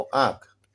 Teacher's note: अनुनासिक कहने का मतलब है नाक और मुँह 50-50 दोनों तरफ से निकलती है